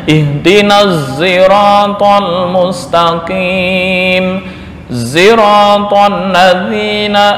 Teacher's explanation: Membaca ismam di Shad dengan suara Za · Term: ismamus shad sautazai